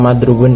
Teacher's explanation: stres atau penekanannya terdapat pada ro dan wawu, tekan lebih kuat dibanding dengan fonem lainnya